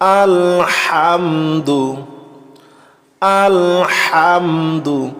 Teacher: আমরা এই হাকে অবশ্যই গলার ভিতর থেকে হা উচ্চারণ করব।